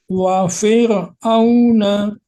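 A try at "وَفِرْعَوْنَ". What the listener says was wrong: Dikurangin Pak ro-nya wa fir'auna. V-nya jangan panjang. Wa fir'auna. Nah, mengucapkan huruf ro jangan sampai mantule.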